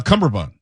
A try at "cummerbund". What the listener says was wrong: Cummerbund. Cummerbund. Not cumberbund. Cummerbund.